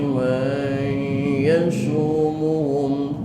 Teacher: Wa idh ta'azzana rabbuka layab'atsanna 'alaihim ila yaumil qiyamati nun mati ketemu ya, idgham ma'al guna, maka disebut idgham naqis, idgham yang kurang masuknya nun mati ke huruf ya, sehingga masih terdengar sisa-sisa suara nun mati